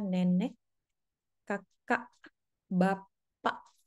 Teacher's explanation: ada satu yang kita sebut dengan glotal stop biasanya direpresentasikan dengan huruf k di akhir